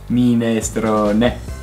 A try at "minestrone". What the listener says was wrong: Bravo.